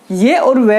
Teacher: ये और वह का अगर उच्चारण करें तो जीभ किसी भी भाग को स्पर्श नहीं करती है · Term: अर्ध स्वर